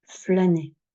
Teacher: ce a a tendance de plus en plus à être prononcé fermé flané pour une question de de rapidité d'articulation mais si on